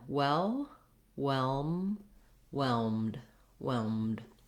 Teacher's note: I'm lifting my tongue to the L, closing my lips for the M, and then releasing the air for the D.